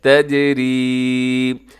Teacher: یہاں جیم کا دیکھیے گا یہ قلقلہ ہے، اس کا کلر بھی بتا رہا ہے، اس کو آپ نے قلقلہ کرنا ہے، اس کی آواز کو ڈبل کرنا ہے۔ · آگے یا مدہ ہے، یا ساکن سے پہلے را کے نیچے زیر لمبا کیجیے گا